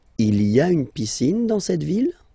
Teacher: don't forget to raise your voice at the end, because it's a question.